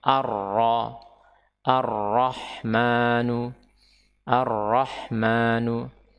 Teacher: lamnya adalah lam syamsiyah. Dia tidak dibaca, tetapi yang dibaca adalah huruf setelahnya